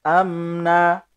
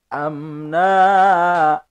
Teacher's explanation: Ketika diwakafkan itu semuanya harus dibaca mad iwad, iwadun anit tanwin, menjadi pengganti dari tanwin, maka dibaca panjang, kira-kira 1 alif 2 harokat, sama dengan ukuran panjang mad tabi'i